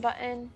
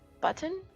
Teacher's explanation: You used a glottal stop the first time you said the word.